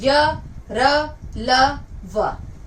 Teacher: सत व्यंजन वे व्यंजन होते हैं जो सीधा बाहर निकलते हैं, इनका स्पर्श कहीं नहीं होता। य, र, ल, व, ये सीधा अंदर से ध्वनियां निकलती हैं और सीधा बाहर उच्चारित हो जाती हैं। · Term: अंतःसत व्यंजन